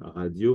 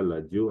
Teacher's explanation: la lettre R se prononce l